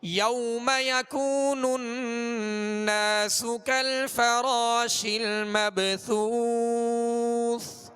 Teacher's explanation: اور مبثوث یہ سا، دونوں سا جس میں وقف کیا جا رہا ہے، یہ آخری حرف بھی سا ہے تو سا کو ادا کرتے ہوئے نرمی کے ساتھ ادا کریں گے، سیٹی کی آواز اس میں پیدا نہ ہو